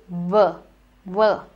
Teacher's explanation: When I say V, it is that your upper teeth need to rest on your lower lip. They need to bite.